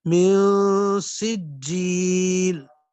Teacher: من نون میں اخفا ہوگا، ناک میں واضح جائیں گے